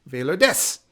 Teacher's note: And it just so happens that the verb am translates to desu. Only most Japanese speakers swallow that last u sound. So to say, for example, I'm Vaylor, in Japanese I say Vaylor des.